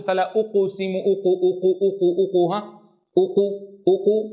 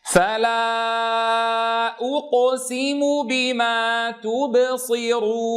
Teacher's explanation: أضم الشفتين عند الهمزة المضمومة وأسكن عند القاف الساكنة، ولا أقول فلا أقسم أقو، هذا خلل.